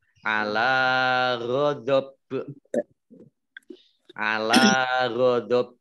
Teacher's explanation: karena baknya dibaca sukun maka menjadi qalqalah atau memantul